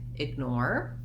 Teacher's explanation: in the word ignore we have second syllable stress